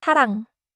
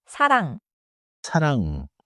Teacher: At the beginning of a syllable, 이응 is silent. At the bottom, 이응 sounds nasal. So, 이응 at the start is like a placeholder, but final, 이응, is the nose sound. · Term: 받침 이응